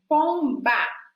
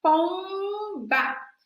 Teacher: o B já termina com a oclusão bilabial, lábio ocluindo com lábio. O M também lábio oclui com lábio.